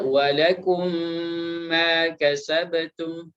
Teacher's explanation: mim yang sukun itu pada lakum itu dimasukkan kepada mim yang setelahnya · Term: idgham mutamathil